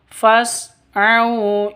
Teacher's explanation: Jadi bacanya fas bukan fas bukan seperti itu tapi fas au. A au sifat lin lentur lemas tidak boleh disentak tidak boleh dipanjangkan.